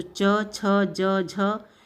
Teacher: इसका उच्चारण जो है हम जीवा के मध्य भाग से करते हैं, तालु से होते हैं, इसलिए तालव्य वाले कहलाते हैं · च छ ज ज यहाँ का उच्चारण कहाँ से किससे करते हैं, तो च छ ज झ या, आप बताओ किससे करते हैं जल्दी से। इसका उच्चारण जो है हम जीवा के मध्य भाग से करते हैं